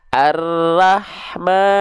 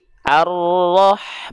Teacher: huruf ro ketika dia berharakat fathah itu harus dibaca dengan keadaan yang tebal